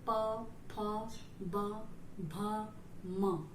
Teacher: तो होठ का स्पर्श हो रहा है, तो इसलिए इसका नाम पड़ा है ओष्ठ।